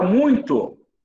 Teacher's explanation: Você fala muito, não saiu pelo nariz? Então é um ditongo nasal.